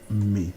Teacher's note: The word in efik-ibibio is me, two low tones. Me, two low tones.